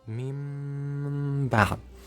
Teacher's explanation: That's a nasal sound I talked about earlier. So you are gonna get a nasal sound for 2 counts while you are making them Meem sound. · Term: Iqlab